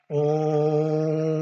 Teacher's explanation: esse som do anusvara, que é essa nasalização que preenche toda a cavidade bucal e nasal